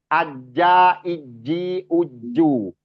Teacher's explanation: tengahtengah lidah kita bertemu dengan langit-langit atas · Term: Jim